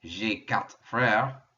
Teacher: when i say this in a sentence you're not going to hear the r at all